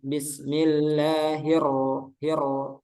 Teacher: Kemudian selanjutnya huruf ro. Huruf ro-nya kurang takril. Takril itu bergetar.